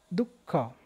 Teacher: विसर्गाचा उच्चार श्वास सोडणे किंवा ब्रेक लागणे